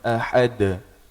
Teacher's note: Da, di, du. Kemudian huruf dal ini sifatnya qalqalah, terpantul ketika sukun atau diwakafkan.